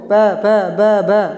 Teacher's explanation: दोनों होठ आपके प फ ब भ में से मिल रहे हैं। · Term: ओष्ठ